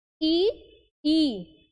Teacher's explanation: पर है बोल के देखिए ई ई यानी जो प्रेशर है जो बोलने का सारा कार्यभार है वह हमने किस पर दे दिया जीभ के आगे वाले भाग पे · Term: अग्र स्वर